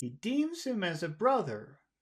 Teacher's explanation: we want to finish our phrase low but because you want to have it sound a little bit nicer happier we want to put some high tones at the end